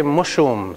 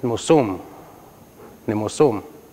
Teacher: In Cree, we don't have the sh or zh sound.